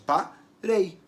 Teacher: Eu não divido parei, eu faço parei. Qual som é mais forte entre o E e o I? O som do E, né? O I é só uma caidinha ali no final. Então, parei, eu vou ter um ditongo decrescente.